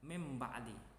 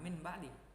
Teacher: Harusnya nun mati bertemu dengan ba, maka dibaca huruf tersebut atau bacaan tersebut menjadi mim. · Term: iklab